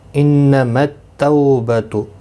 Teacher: تو وولین ہے، تھوڑا نرمی کے ساتھ کھینچ کر ادا کریں گے